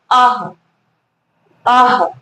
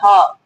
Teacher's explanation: विसर्ग का उच्चारण ह की तरह होता है।